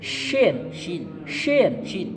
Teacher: Ini ada sifat tapasi, jadi udaranya keluar, Ya. giginya agak renggang.